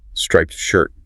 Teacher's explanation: The adjective is striped. Often with a stop t at the end.